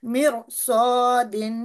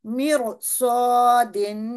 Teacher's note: تو اس صاد کی وجہ سے یہ را تھک ہوگی، نہ کہ اس میم کی وجہ سے، میم مکسور کی وجہ سے اس کی ادائیگی ہوگی.